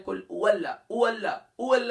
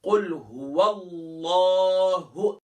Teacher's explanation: قل هو اللہ، اکثر پڑھتے ہیں کل او اللہ، او اللہ، او اللہ نہیں ہے، ہا ہے، ہا کو گلے کے باٹم سے ادا کریں گے